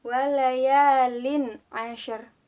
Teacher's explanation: Lalu pada ayat kedua ada hukum bacaan idhar halqi, yaitu karena ada tanwin bertemu dengan ain, harus dibaca terang atau jelas, idhar halqi.